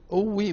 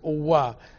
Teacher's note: as if you are putting a w between these two together